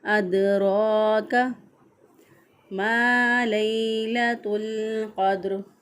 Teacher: अदराक, रॉ को लंबा करेंगे, काफ को लंबा नहीं करेंगे